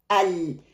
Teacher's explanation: The tip of the tongue touching the makhraj, but the side from the tongue sides sound comes out. Sound is blocked at the tip, but the sound exit left and the right from the edges of the tip. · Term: lam